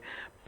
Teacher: पै बोल करके देखें आप कि आपके दोनों होंठ जो है मिल जाते हैं